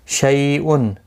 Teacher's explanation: شی یا لین ہے، تھوڑا نرمی کے ساتھ کھینچ کر ادا کریں گے